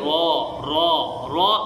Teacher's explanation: را کی ادائیگی کے وقت زبان میں لرزہ پیدا ہوتا ہے، لیکن یہ زیادہ نہیں ہونا چاہیے، جیسے را اس طرح ادا نہ ہو، بلکہ را را را ادا کرنا چاہیے۔